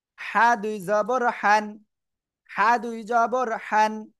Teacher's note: হার উপরে দুই জবর, হাটা গলা চেপে পড়তে হয়।